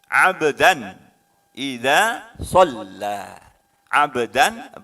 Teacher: maka ba ini huruf qalqalah yang termasuk dalam qalqalah sugro karena letaknya di tengah